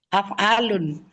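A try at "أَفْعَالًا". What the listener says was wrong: Af'alan. Kan fathah kan A-nya. Awa'a kan. Nah, ya. Af'alan.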